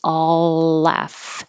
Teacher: The L connects, and because you have an L in all and then in laugh, just hold it in that position